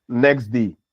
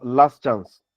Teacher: in saying the expression next day, you realize that the sound, that is the alveolar stop, that is at the end of the first word, get deleted